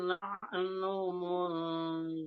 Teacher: Di ujung ini nahnu ini nunnya ini enggak panjang. Satu. Kedua, diikfanya lebih diikhfakan lagi, lebih ditahan lagi.